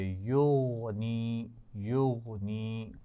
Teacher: یغنی، غین پر قلقلہ نہیں ہوگا، اس کا خیال رکھیے.